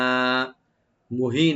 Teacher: হাটাকে অবশ্যই রাইট দিবেন গলার শেষ থেকে। আর নুন উপর যে দুই জবর আছে, এখানে আমরা যখন আমরা ওয়াকফ করব, এখানে আমরা এক আলিফ পরিমাণ টেনে ছেড়ে দেব।